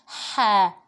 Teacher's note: جو حلق کا ہمارا درمیانی حصہ ہے وہاں سے ح ادا ہوتا ہے